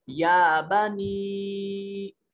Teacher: بنی میں یا ساکن ہے اور اس سے ماقبل زیر ہے, مد ہوگا, حرف مدہ یا مدہ کہیں گے اور اس یا کو لمبا کریں گے